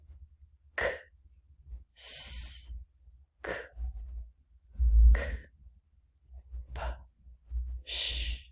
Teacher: You shouldn't. The vocal cords are not moving with these sounds. These are whisper sounds.